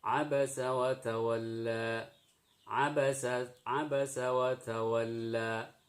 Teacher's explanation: harus ada suara lam yang sedikit dipanjangkan karena di sini mad arid lisukun. Mad tabi'i yang berakhir atau yang ada di akhir kata atau ayat.